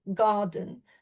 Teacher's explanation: you have a strong first syllable and a weak second syllable garden. So that stressed syllable then unstressed and then you can break that down into the individual syllables like the gar and the dun.